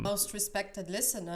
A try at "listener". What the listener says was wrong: My most respected listener. And the R in respected sounds fine. So just insert that R just at the end of the word here, listener.